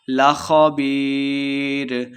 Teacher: لخبیر، یہ مدہ ہے، 2 حرکات لمبا کریں گے، خا کو موٹا پڑھنا، آخر میں وقف کر دیں گے